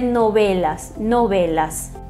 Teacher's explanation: É um intermediário entre V e B, os lábios semi-abertos, né, não muito pressionados